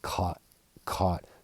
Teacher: in American English, the T kind of disappears, more like caught, caught.